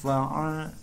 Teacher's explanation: ain ini keluar dari kerongkongan bagian tengah. Dari kerongkongan ya, atau tenggorokan bagian tengah. Bukan dari mulut.